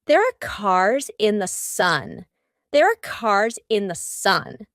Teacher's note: both of these sentences have an S and then a vowel what happens here in each of these words the S becomes a zed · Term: linking the S Plus a vowel